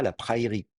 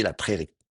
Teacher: Quand vous mettez le terme aïn et que vous le mettez à l'état construit, la diphtongue aï va être contractée en e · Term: La contraction d'une diphtongue